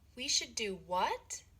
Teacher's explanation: Ngữ điệu đi lên ở do what.